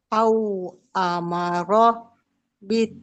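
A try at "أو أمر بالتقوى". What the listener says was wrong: Oke, sudah bagus. Qafnya kurang pantul. Bitako. Hurufnya, qafnya kan qalqalah.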